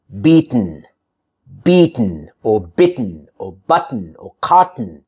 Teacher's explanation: you're able to omit, delete that vowel in between and just say the T sound and the N sound